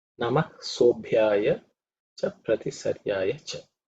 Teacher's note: this sob, that's fourth letter in the pa varga, so it has to be aspirated.